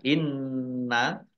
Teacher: Nun tasdid dibaca Gun atau mendengung ditahan dua harakat